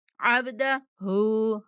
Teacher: बा पर कलकला करना है, मतलब कि बा को थोड़ा सा हिला कर पढ़ेंगे।